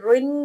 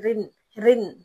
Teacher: ہے تو موٹا را دو زیر رن نہیں بلکہ رن رن آپ موٹا نہیں کریں گے منہ کو نہیں بھریں گے